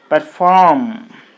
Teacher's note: you put the stress mark on the second syllable then it will be perform